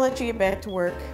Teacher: the K in work is released as it's the final sound and it's not linked to any following consonants